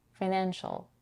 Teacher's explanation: In financial, we have the diphthong I in the first syllable. It's a weak, shorter I because the syllable is unstressed